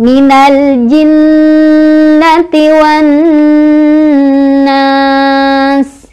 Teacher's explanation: Matobi'inya adalah alif sebelumnya fathah bertemu dengan sin, sinnya diwakofkan, makanya itu jadi mad'arid li sukun. Bacanya boleh dipanjangkan, boleh 2, boleh 4, boleh 6.